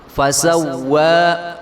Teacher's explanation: واو کے ایک الف کو برابر لمبا کریں گے